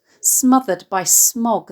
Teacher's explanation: The sibilant and nasal alliteration of smothered and smog can be described as idiophonic, as these sounds evoke the suffocating effects of pollution.